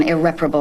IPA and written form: ɪˈrep.ər.ə.bəl (Irreparable)